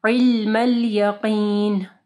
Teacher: عین کو گلے کے درمیانی حصے سے پڑھنا ہے